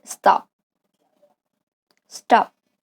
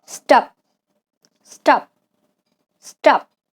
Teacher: it sounds more like a D than a T, even though it's spelled with a T.